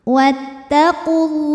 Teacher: sukun bertemu sukun tidak bisa dibaca sehingga sukun pertama dilepaskan wattaqulah lam pada lafaz Allah atau lam jalalah dibunyikan secara tafkhim